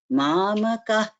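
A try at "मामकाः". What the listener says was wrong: Here it is Mamakaha. I heard it as Mamakah.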